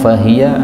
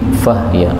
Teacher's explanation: Ayat 5 fahiya, haknya boleh disukun menjadi fahya